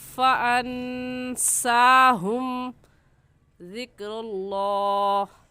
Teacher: लफ्ज़ अल्लाह को पूरी यानी मोटा करके पढ़ेंगे